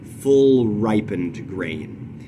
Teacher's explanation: there he throws a spondy at full ripened grain we have we have several stressed syllables in a row there where we have a spondaic substitution